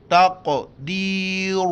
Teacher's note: موٹا کر کے پڑھیں گے تا قاف زبر تق تق تقدیر را کو موٹا کر کے پڑھنا ہے